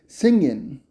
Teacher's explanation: In the case of singing, the gerund ‘ing’ form, it’s singin.’